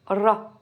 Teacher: Mais c'est, on va dire, un peu un R roulé.